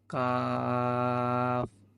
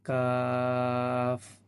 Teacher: অর্থাৎ জিহ্বার গোড়া থেকে একটু আগে বাড়াই দিব, কাফ। 4 আলিফ টান হবে কাফ উচ্চারণের সময়